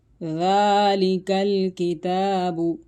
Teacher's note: ذالک الکتاب، کاف کو باریک پڑھا جائے گا، کیونکہ یہاں پر یہ جو کاف ہے یہ زبان کی جڑ اور تالو کے سخت حصے سے ادا ہوتا ہے۔